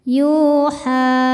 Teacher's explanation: Sebab huruf ha berharakat fathah panjang. Cara baca ha-nya ini adalah dipanjangkan dua harakat saja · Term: mad thobi'i muqaddar